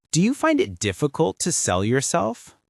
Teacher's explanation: So the intonation will go up at the end. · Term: rising intonation